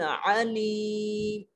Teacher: اور عین میں آواز کو حلق میں لے جاتے ہیں